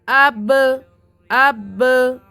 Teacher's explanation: جیسے حمزہ با زبر اب، اب دیکھیے اب آواز 2 مرتبہ ہو رہی نا، آپ کے ہونٹ لگ کے پھر سے الگ ہو جا رہے، قریب ہو کے الگ ہونا ٹکر کھانا ہوتا، ہونٹ ملنا اور پھر دور ہو جانا، ہونٹ مل کے رکنا نہیں، رکنے سے خلخلہ نہیں ہوگا، ہونٹ مل کے پھر سے دور ہو جانا اس کو خلخلہ بولتے، ٹھیک ہے؟